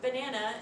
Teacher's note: for banana the pattern of the stress would be weak strong strong